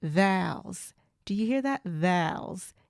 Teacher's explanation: people from the south hold on to their vowels they elongate them